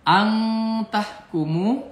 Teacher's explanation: Ang ini ikhfa, ang tahkumu, angnya nun mati menghadapi ta berarti ikhfa dibaca samar, huruf n jadi ang.